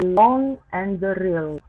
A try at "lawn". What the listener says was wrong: Lawn. But elongate it again, because you go right to the N and lawn.